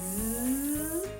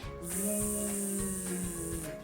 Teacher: Teeth together, a bit like a S, but it's a louder sound, I would say.